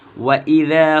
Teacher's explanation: وَإِذَا ذال ہے، وَإِذَا جا یا زا نہیں کہیں گے